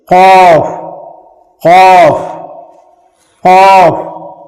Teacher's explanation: उसके बाद देखिए उसके बाद वाला जो हर्फ है वो है क़ाफ। क़ाफ ये हलक से कहा जाता है, क़ाफ। मुंह को थोड़ा गोल करेंगे